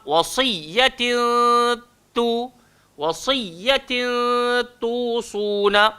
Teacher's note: Tanwin bertemu dengan ta'. Keluarlah ikhfa, wasiyatin tusuna. So kita kena dengung dekat situ.